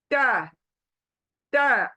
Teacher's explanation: आपकी जो जबान की नोक है स्प्रेड होगी, और वो जड़ों को लगेगी जाकर सामने के दो दांतों के पीछे।